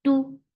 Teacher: for dhamma, circle your lips. And the sound is short.